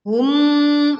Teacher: mim sukun bertemu dengan mim. Ya, kita leburkan dan disertai dengung